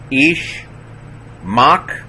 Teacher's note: again, short vowel, so that's a silent schwa closing the syllable